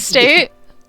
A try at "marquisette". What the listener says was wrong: No, it's not estate. There's not an estate. It's just Marquis and then T-A-T. There's no estate there. The English way they're saying it's Marquisite or Marquisette. It's Marquisite.